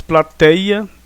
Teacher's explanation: plateia, o TEI é a sílaba tônica, e o A fica então separado, né?